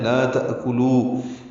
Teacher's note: تأکلو میں حمزہ ساکن جھٹکے سے پڑھا جائے گا، کاف باریک پڑھیں گے، لام کو بھی بنرمی سے باریک پڑھیں گے، لو واو مدہ ہے، لا تأکلو۔